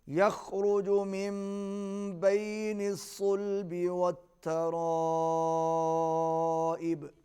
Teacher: یخرج، خا حلق سے ادا ہوگا، را کو پر پڑھیں گے۔ · بین الصلب، صاد کو موٹا پڑھیں گے۔ والترائب، بڑی مد ہے، کھینچ کے پڑھیں گے، با پر قلقلہ کریں گے۔